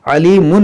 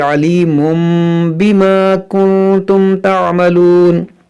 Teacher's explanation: یہاں پر جو میم ہے یہ میم کیوں آیا ہے، کیونکہ تنوین کے بعد با ہے، تو یہاں پر اس لیے میم آیا ہے ، تو اس کو پڑھیں گے علیمم، علیمن نہیں پڑھیں گے